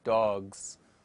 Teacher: In time, the sound at the end of this and similar words was dropped, and consequently s sound was changed to z, and the word is now produced as dogs, under the influence of the preceding voiced sound.